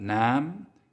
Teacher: that aw vowel in the middle changed to ah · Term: The Great Vowel Shift